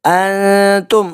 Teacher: نون ساکن کے بعد آگے تا ہے، تو یہاں پہ اخفا کا قاعدہ اپلائی ہو رہا ہے، چھپا کر غنہ کریں گے